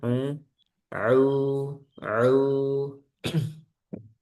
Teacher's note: Sama ainnya sempurnakan au, jangan masuk hidung